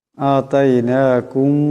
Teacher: এখানে মিম সাকিনের পরে বা আসছে, মিম সাকিনকে গুন্না করিয়া পড়তে হবে। ইকফার একালি পরিমাণ গুন্না হবে।